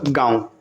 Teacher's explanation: चंद्र बिंदु के उच्चारण के समय हवा मुंह और नाक दोनों से निकलती है